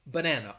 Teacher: it's like an upside down e that is the schwa so in the word banana three syllables the schwa is in the first and the second syllable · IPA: / bəˈnæn ə /